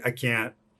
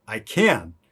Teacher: can't is a little shorter a little more nasal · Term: stop t